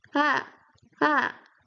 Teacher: Then fourth tone, you go from up to low